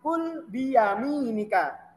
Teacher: Kalau kul pakai kaf itu dia pengucapannya lebih ringan.